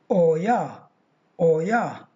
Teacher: Oi, diphthong, plus schwa to get the sound triphthong oya, oya. And u plus schwa to get uwa, uwa, the sound uwa.